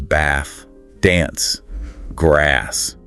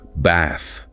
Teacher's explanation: In many British accents, it's a longer dis sound. Think bath, not the shorter A you often hear in American English.